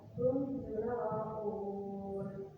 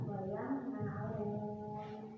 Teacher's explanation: Ada mim sukun bertemu nun, baca jelas wayam na'un. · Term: idhar syafawi